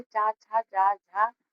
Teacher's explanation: जिन व्यंजनों के उच्चारण में स्पर्श का समय अपेक्षाकृत अधिक होता है और उच्चारण के बाद वाला भाग संघर्षी हो जाता है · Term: स्पर्श संघर्षी